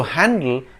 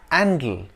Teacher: in a number of English dialects, such as Cockney, which is usually spoken by the working class people in and around London, the H sound is dropped. So handle becomes andle, leading to the confusion between fork handles and fork handles.